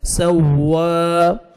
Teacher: فا، سین زبر واو شد سو، واو کھڑا زبر وا سوا، ملائیں گے سین کو واو کے ساتھ، سختی سے پڑھا جائے گا سوا